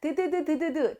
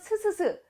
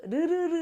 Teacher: 우리가 잇몸과 혀 끝이 만나면서 소리를 만들어. 그래서 여기에서 소리가 나.